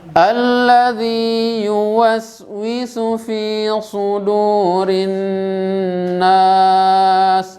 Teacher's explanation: Jadi di situ ya-nya tipis, shadnya tebal, dalnya tipis. Tidak boleh huruf ya-nya atau huruf dalnya terpengaruh dengan huruf isti'la yang satu ini.